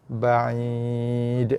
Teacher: Keluar bunyi i tu daripada tengah halkum, tengah leher.